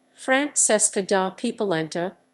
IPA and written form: franˈtʃeska da (p)poˈlɛnta (Francesca da Polenta)